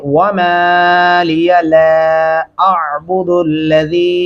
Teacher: हम लाम को दो अलिफ के बराबर तक लंबा करेंगे। और यहाँ पे अलीफ की आवाज़ अलग से और आइन की अलग से आवाज़ महसूस होनी चाहिए, पता चले कि आपने वाकई ही में तलफ़्फ़ुज़ अदा किया है। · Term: दो अल्फी मद्दा